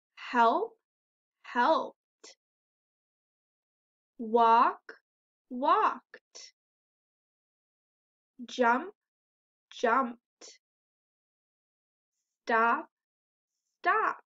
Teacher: in all of these words they actually have the t sound at the end even though it looks like e d